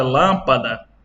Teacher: a vogal a que recebeu o acento circunflexo ela tem o som fechado